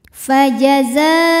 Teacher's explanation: kita panjangkan boleh empat boleh lima harakat tapi tidak boleh dua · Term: mad wajib muttasil